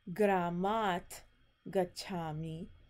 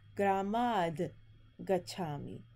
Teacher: the ta is going to turn into the non-aspirate soft consonant, da, ta, da.